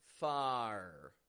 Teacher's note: we're opening our mouth up getting a clear ah sound LAX a followed by an R